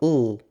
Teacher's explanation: The l phoneme is pronounced as a typical L sound around front vowels, but next to back vowels a, o, and u, it's pronounced as a dark L